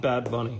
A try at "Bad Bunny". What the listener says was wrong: Don't pronounce the bees.